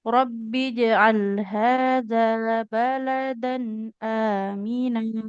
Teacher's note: Hadza zalnya panjang. Fathah ketemu alif harus panjang. Dua harokat.